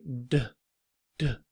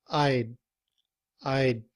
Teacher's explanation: when we speak, we don't blow the air after the sound of the word D. We don't say D, D.